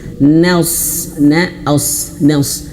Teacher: huruf shad di sini jangan sampai menebalkan huruf nun yang tipis